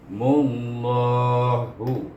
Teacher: Nama Allah itu kita baca dengan tebal, iaitu Mullahu.